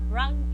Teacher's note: The r or the ra is alveolar because the tongue close to the alveolar ridge.